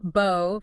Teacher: the B can actually have some pre-voicing going on, meaning the vocal cords start vibrating a little bit before you even release the B sound, which is not as common in English. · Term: pre-voiced B